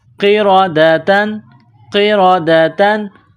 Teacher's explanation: تنوین کے بعد خا ہے، حروف حلقی ہے تو یہاں تنوین پر غنہ نہیں کریں گے